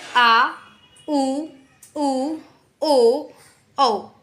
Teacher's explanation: पश्च स्वर क्या है? जीव के पिछले भाग का यूज़ है, जैसे आ, उ, ओ, औ, है ना।